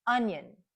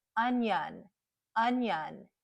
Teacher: And the second syllable, which is unstressed, is the schwa sound. Onion. Now, maybe I know it's probably hard to hear the difference, but if I gave the short U sound to both syllables, it would sound like onion, onion.